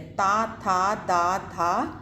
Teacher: ताथा दाना का उच्चारण स्थान है ऑप्शन बी दंत। आप प्रोनाउंस करके देखिए कि जिभ्या कहां का स्पर्श कर रही है? दांतों का स्पर्श कर रही है। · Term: दंत्य